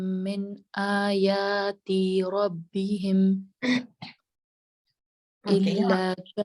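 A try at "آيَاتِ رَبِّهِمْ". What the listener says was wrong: यहाँ देखें कितनी हरकत है? तो आयाती जब आप पढ़ेंगी तो इसका मतलब है आप उसके साथ हरकत बढ़ा रही हैं. तो आयाती रब्बिहिम.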